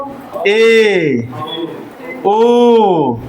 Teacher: ये हमारे जो स्वर है इनको हम जब बोलते हैं तो आधे से कम मुंह खुलता है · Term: अर्ध समृद्ध स्वर